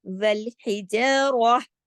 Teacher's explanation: تا مربوطہ اگر آئے اور ہم اس پر وقف کریں تو وہ تا نہیں رہتا، وہ ہاں میں بدل جاتا ہے · اس وجہ سے ہم نے والحجارہ، راہ ایسے کریں گے، لیکن آپ کے پڑھنے میں، آپ کی آواز میں آخر میں ہاں ضرور آنا چاہیے